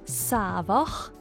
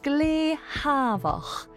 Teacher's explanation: S lenites to a H sound.